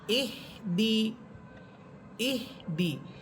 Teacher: অনেকেই দেখবেন যে ইহদি বলে না, বলে ইহিদি, অর্থাৎ হায়ের নিচে জের দিয়ে পড়ে, এটাও ভুল। এখানে শব্দটা হবে হামসা হাসের ইহ, দাল সের দি, ইহ দি।